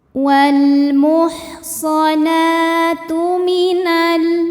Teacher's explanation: Wal muhsana, nah dihukumi dengan mad tabi'i muqaddar, karena huruf nun berbaris fathah panjang, maka cara bacanya panjang nunnya 2 harokat saja